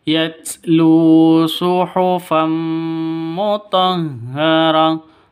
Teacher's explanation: Yatlu, lu panjang dua ketukan karena ada waw mati diawali dengan dhammah.